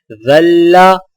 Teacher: ذال کی آواز باریک اور نرم ہوتی ہے